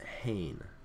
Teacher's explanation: numeral one and you pronounce this pain rather than aim so it adds an H sound at the beginning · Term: rough breathing mark